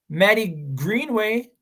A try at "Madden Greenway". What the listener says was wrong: Madden? Madden Greenway. It ends with an N.